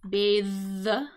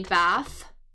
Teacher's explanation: So we've got like that TH. It is a voiced TH.